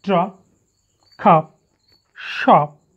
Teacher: released that means if a word ends in the sound per the sound should not be released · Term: final is not released